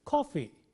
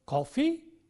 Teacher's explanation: I said coffee with the falling tone coffee and he said coffee with the rising tone coffee